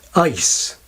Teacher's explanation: the word ice begins for many speakers with a raised quality, closer to the English hesitation vowel